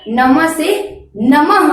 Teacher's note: विसर्ग का उच्चारण ह के रूप में किया जाता है, जैसे नम, तो नम है, अगर वहां पर हम म के बाद विसर्ग लगा दें, ये दो बिंदी लगा दें, तो उसका उच्चारण नम से नमः हो जाएगा, अर्थात म के अंत में ह आ जाएगा।